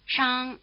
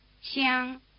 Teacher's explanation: the difference between the retroflex fricative spelled SH and the palatal fricative spelled X